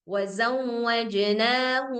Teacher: jadinya suara mimnya jadi samar